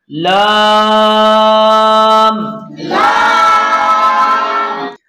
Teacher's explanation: زبان کے کنارے کو سامنے والے دانتوں سے پہلی داڑھ کے مسوڑے سے لگانے سے لام ادا ہوگا